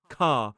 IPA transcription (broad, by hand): kɑː